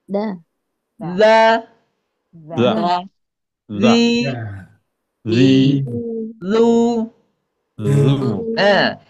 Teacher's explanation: ujung lidahnya ditempelkan ke ujung gigi seri atas. Da dza d d dzi zu itu karakternya lembut ya.